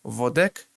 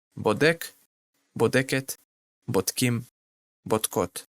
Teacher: Vet without a dagesh can be equivalent to the English V letter. With a dagesh, it will be equivalent to the English B.